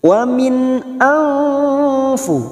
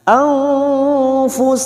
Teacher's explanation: Kita uraikan dari kata wamin karena sekarang kita wasal atau terus wamin ang nun sukun bertemu hamzah idhar halki dibaca jelas tanpa mendengung. Wamin anfu nun sukun bertemu fa ikfa hakiki kita samarkan bunyi nun sukun kita dengungkan 2 atau 3 harokat